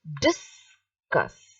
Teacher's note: so the dis is said loudly and the cuss is said softly, because here it is a noun. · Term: the stress